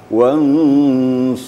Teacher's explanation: kalau bisa gunah itu sedikit menonjol daripada tanda panjang satu Alif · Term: hukum ikhfa